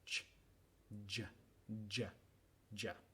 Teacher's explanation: vamos a practicar ese sonido es igual que ya solo que dejamos vibrar las cuerdas vocales y se vuelve sonoro